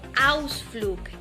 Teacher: Si la G se encuentra al final de una palabra, entonces esta se pronunciará como una K. Por ejemplo, Ausflug, que significa paseo.